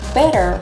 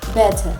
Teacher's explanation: In American, the T sounds more like an R, but in British, it is a hard T.